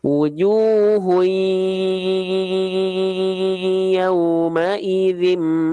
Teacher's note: harus dengung dia tapi dia dengungannya nakis enggak sempurna ya ketika kita buka tutup hidung dia enggak berubah eh dia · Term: idgum bunah naqis